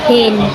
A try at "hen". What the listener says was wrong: Eh, ang E, di ba kay? E ang letter, di ba? H-E-N. So, hen.